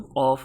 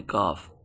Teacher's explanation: اس کا تکلم قاف ہوتا ہے منہ بھر کے، اس کو بغیر منہ بھرے پڑھتے ہیں کاف۔ اگر کاف کی جگہ ہم قاف پڑھ دیں، موٹا کر کے پڑھ دیں تو یہ غلطی ہے۔ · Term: موٹا قاف